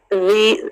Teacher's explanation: इसमें बजिंग नहीं है, इसको ज़ी नहीं पढ़ेंगे